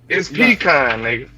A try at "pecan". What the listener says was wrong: You pronounce too many syllables. Cause why the A so strong in that bitch, nigga?